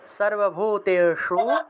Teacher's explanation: या देवी सर्वभूतेषु, शु मूर्धন্য স, জিহ্বা উল্টে স উচ্চারণ করতে হবে